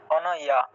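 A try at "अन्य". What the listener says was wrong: অন অন কেন হবে? অন কেন হলো? অন উচ্চারণ হবে না তো। হ্যাঁ আকার আছে তো, আকার থাকায় ইয়া, আনইয়া, ঠিক আছে। আনইয়া, আনইয়া এইভাবে, আনইয়া। এটাকে যদি আমরা সহজভাবে আর উচ্চারণ করতে চাই এভাবে, আন ইয়া, আন ইয়াটাকে একসাথে উচ্চারণ করতে হবে।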